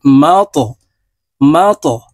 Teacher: ত কলকালার হরফ উপরের দিকে ধাবিত করে ধাক্কা দিয়ে উচ্চারণ করতে হবে